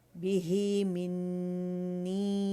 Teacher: اگر اس کو روانی میں پڑھیں گے تو پھر منی کھینچیں گے 4 to 5 کاؤنٹس، مد منفصل جائز بنے گی